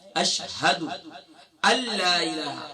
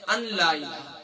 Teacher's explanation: یہاں نون جو ہے یہ سائلنٹ ہو جائے گا، حمزہ کو لام سے ڈائریکٹ جوائن کریں گے. یہاں نون تو لکھا ہوا ہے لیکن نون پڑھنے میں نہیں آئے گا.